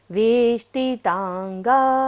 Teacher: वेष्टि में देखिएगा मूर्धन्य श है, मूर्धा से उच्चारण करेंगे।